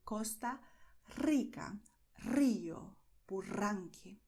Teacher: you're going to see that your tongue is trembling